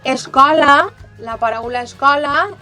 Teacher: la paraula escola, la O, és oberta